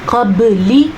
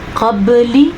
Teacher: لام کے نیچے زیر کو لمبا نہیں کرنا آپ نے، قبلی اتنا سا.